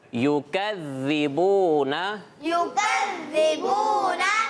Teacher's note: زال پر تشدید آ گئی ہے تو زال پہ جماؤ بھی ہوگا